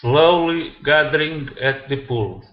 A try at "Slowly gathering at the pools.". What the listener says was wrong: Okay, now when you add that R though, you don't want to roll it. Okay, so you're using a hard R, saying gathering, ding. Okay, all right, so ER endings that end with an ING are challenging for you to pronounce a good R.